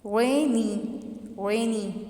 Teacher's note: stress first one पे आया